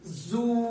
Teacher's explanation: پیش کی وجہ سے ہونٹ گول ہو رہے ہیں